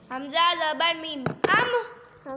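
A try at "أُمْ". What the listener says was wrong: پھر کلکلا کر دی ہے. ام. ایسے رک جاؤ.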